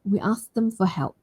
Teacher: I can drop the T sound or I can say it nice and light. We asked them for help because I want to move on to the T sound after we asked them, right?